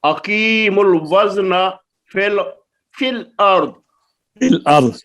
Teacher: پہلا ساکن حرف مدہ ہو تو حذف کر دیں گے